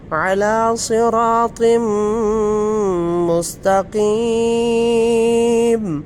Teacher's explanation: نون تنوین کے بعد جو ہے نا حروف یرملون، یارا میم لام واو نون میں سے میم آ گیا تو ہم غنہ کریں گے